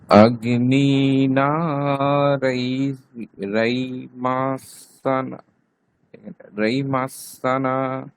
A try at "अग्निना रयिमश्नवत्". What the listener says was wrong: রইমাষ্ণবৎ, তালব্য শয়ে নয়, ঠিক আছে? এই যে আমরা একটু আগে একটা বলেছিলাম না, তখন এরকম পরে মাত্রা থাকবে, মাত্রাটা উঠে গিয়ে ওখানে দন্তন্য যুক্ত হয়ে যাবে, সেই জন্য এরকম আছে, দেখুন এখানে।